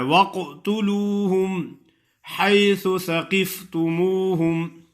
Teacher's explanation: قاف پہ قلقلہ ادا کرنا ہے اور قاف کو موٹا بھی کرنا ہے